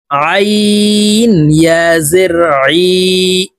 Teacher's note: আইন হরফ হালকের মধ্যখান থেকে চাপ দিয়ে উচ্চারণ করতে হবে